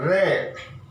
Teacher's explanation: इसमें क्या होता है कि जब हम रे का जब उच्चारण करते हैं, रे, तो हमारी जीभ जो है वो हवा के दबाव से कप कपाती है। तो कप कपाने के कारण जीभ के अंदर क्या होता है, कंपन होता है। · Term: प्रकंपित व्यंजन